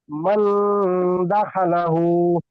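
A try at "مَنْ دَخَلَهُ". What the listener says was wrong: এখানে দা খা নয়, দা খ। খ যাবার খ, দা খা হচ্ছে। মান দাখলাহু।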